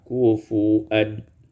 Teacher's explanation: Pada surah Al-Ikhlas ayat yang keempat kufuwan, ibdalul waw hamzatan, ditukarkan waw dengan hamzah